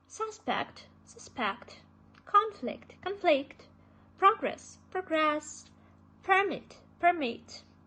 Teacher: the stress falls on the first syllable if it is nouns and the second syllable if it is a verb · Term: wrong stress